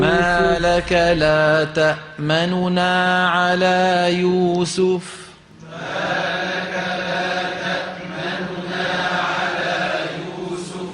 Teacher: كأنك عم تقول تأمننا بس أسرع شوي ووطي صوتك بس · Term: الاختلاس